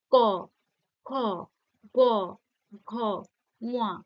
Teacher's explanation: ক, খ, গ, ঘ, ঙ, কি হচ্ছে? জিভটা পেছনের দিকে চলে যাচ্ছে, পশ্চাৎভাগে চলে যাচ্ছে, আর সেই পশ্চাৎভাগটা কণ্ঠে স্পর্শ করছে, তাই না? উপরের যে নরম তালু সেখানে হালকা স্পর্শ করছে। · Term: কণ্ঠধ্বনি